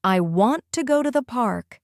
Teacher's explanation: The strong beats are want, go, and park.